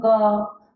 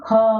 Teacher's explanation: जो प्राणवायु है या श्वास वायु है वो क बोलने में कम निकल रही है और ख बोलने में ज्यादा, इसलिए जो पहला, तीसरा और पांचवा वर्ण है वे अल्प प्राण वर्ण है।